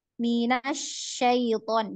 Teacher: Kalau punya sifat rohoa dan hams ya, maka ketika ditasydid itu dia tidak terputus suaranya ya